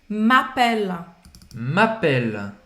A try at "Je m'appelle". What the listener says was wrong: Não vai pronunciar esse E no final. Não é appeler, não é appelle, não é appelle, tá? É appelle.